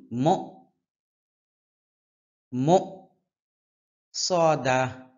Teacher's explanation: সিন এবং সদ একই জায়গা থেকে উচ্চারণ হয় তবে সদের উচ্চারণটা মোটা হয়